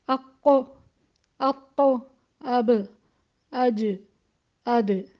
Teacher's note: یہ سارے حروف شدت کے حروف ہیں اور جہر کے بھی حروف ہیں۔ ان میں آپ نے دیکھا ابھی جو ہم نے تمام حروف پڑھے اس میں 2 صفات ہمیں مل گئیں، ایک جہر کی بھی اور ایک شدت کی بھی، اور حمزہ جو ہے وہ بھی جہر اور شدت ہے لیکن اس کو جھٹکے کے ساتھ ادا کیا۔